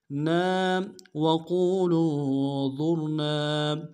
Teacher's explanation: ہے، وا کو موٹا کرتے را کو موٹا کریں گے، ظر، نون کے ساتھ الف مدہ ہے، ایک اعتدال میں کھینچیں گے